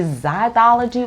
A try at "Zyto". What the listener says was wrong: Zyto. It's no ology on that one.